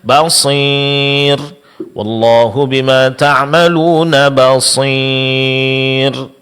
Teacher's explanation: di samping kita mengucapkan huruf mad ya itu disertai adanya suara yang keluar dari hidung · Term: ghunah